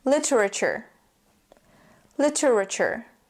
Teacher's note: more difficult we have the r and the schwas sound and the T and U don't make a two sound or t sound they make a CH sound · the T and U don't make a TU sound or T sound. They make a CH sound, just like in temperature.